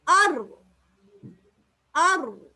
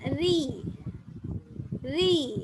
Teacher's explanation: இடத்துல ஹல்க்கு கிட்ட இடைவெளி குறைவாக காணப்படுது அதனால என்ன நடக்குது வல்லினமாக உச்சரிக்கப்படுது அக்சல்சான் பின்னோக்கி தள்ளப்படுது வசதுல் லிசான் குளியாக இருக்குது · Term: வல்லினமான ரா